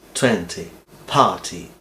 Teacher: Ponemos la lengua en los alveolos y soltamos un poco de aire, un pelín de aire.